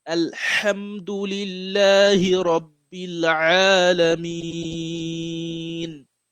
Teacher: you have to pronounce the ha very well because the ha comes from the wasat al halq